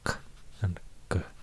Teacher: corresponding plosives, k and g, articulated at the same place in the velar area, in the mouth